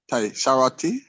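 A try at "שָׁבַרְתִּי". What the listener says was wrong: Yeah, shavarti. Shavarti. There's no dot right here, so you got to make a V sound. Shavarti, shavar, shavarti, shavarti, shavarti, shavarti, shavarti, shavarti, shavarti. Shavarti.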